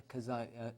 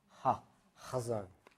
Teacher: So it's not like we pronounce it k, like the kazon, or ch, chazon. It's ha, chazon. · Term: The guttural